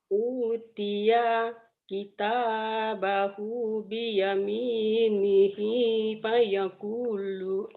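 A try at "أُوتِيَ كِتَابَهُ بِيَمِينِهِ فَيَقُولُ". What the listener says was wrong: U-nya panjang ya Bu ya. Utia Utiya kitabahu biyaminihi fayaqulu.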